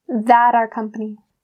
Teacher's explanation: a lot of North American English native speakers will change our to R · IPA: /ɑːr/